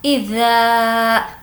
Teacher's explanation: ذا کو کھینچ کر پڑھیں گے کیونکہ یہاں پر الف مدہ ہے۔ الف مدہ مینس الف سے پہلے زبر ہو تو اس کو الف مدہ کہتے ہیں۔